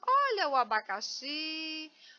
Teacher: A palavra abacaxi, ela não é acentuada, mas eu sei que a sílaba mais forte é xi.